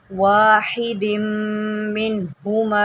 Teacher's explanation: मीम के ऊपर जब तशदीद आती है तो उसको हमेशा गुन्ना के साथ पढ़ते हैं। जब आप मीम पढ़ेंगे तो आपके दोनों होंठ मिलेंगे और आपकी आवाज़ नाक में जाएगी। गुन्ना की आवाज़ हमेशा नाक में जाती है।